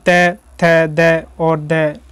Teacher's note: दंत में होता है त वर्ग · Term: दंत स्पर्शी व्यंजन